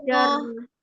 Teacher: jangan ditasydidkan ro-nya. Fathah saja ja sama ro.